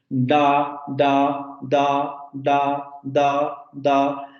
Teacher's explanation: La punta de la lengua se va hacia los alvéolos.